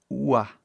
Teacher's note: é mais fácil pensar isso como som de U que abre para A. Ua. Só que faz muito rápido.